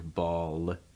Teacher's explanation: he's pronouncing this more with a light L, where that L is really clear